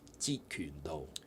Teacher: Do is also low. So actually, they're all low level tones.